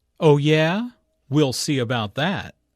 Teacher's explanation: Notice the emphasis on that, which refers back to good at spelling.